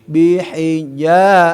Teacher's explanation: mad tabii ya harus diayun, dipanjang ya